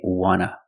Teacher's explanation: And we see the T in want is an NT, so we don't pronounce the T and we say wanna.